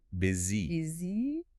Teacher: The U transforms into a short I sound.